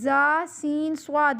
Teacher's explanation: یہ 3 ایک ہی جگہ سے نکلتے ہیں، ان میں سیٹی کی آواز پیدا کرنی ہے